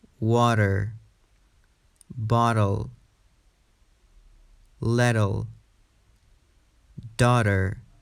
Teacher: Americans tend to pronounce a flap T when the letter T is between two vowel sounds, as in these words. The flap T is a flatter sound that actually sounds more like a D.